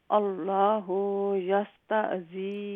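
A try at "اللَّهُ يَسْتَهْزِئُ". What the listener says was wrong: اللہ ہاں لمبا نہیں ہے اللہ یستہزئ نہیں اللہ ہاں کو لمبا کر رہی ہیں آپ اللہ لمبا ہے لیکن اللہ میں جو ہاں ہے وہ لمبا نہیں ہے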